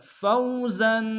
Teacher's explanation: فوزن میں زا کے اوپر تنوین غنہ کریں گے۔